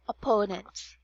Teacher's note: first syllable is short oh and the second one is long Oh